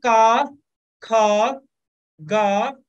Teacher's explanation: कावर्ग जो है वो कंठ से बोला जाता है। कहां से, गले से।